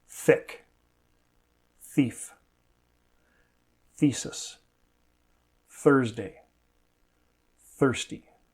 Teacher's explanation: Native speakers do this differently, so there is no one right way, as long as you're making the right sound. The sound comes from the friction of the air escaping between the tongue and the teeth. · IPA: θ